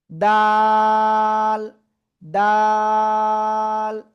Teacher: জিহ্বার আগা, উপরের দুই দাঁতের গোড়ায় লাগাবো, লাগাবো, লাগিয়ে 1 2 3 আলিফ টেনে পড়বো।